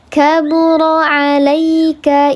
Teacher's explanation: Ya sukun sebelumnya harakatnya fathah dibacanya dilembutkan 2 harakat, tidak dibaca panjang, namanya harfulin bukan madlin.